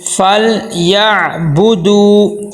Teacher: فا کو لام کے ساتھ ملائیں گے لیکن کلکلا نہ ہو، فل ایسے نہ ہو.